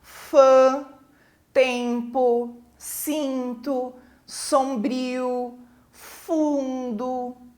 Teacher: parte do som saiu pela boca e parte, né, do ar saiu pelo nariz, né, pelas fossas nasais, ou seja, produzindo um som nasal. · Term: vogais nasais